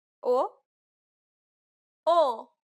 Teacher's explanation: it's the closed version this means that the mouth and tongue are positioned a little bit higher